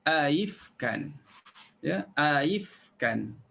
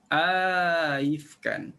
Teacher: akan dibaca dengan tashil hamzah yang kedua tanpa idgham alif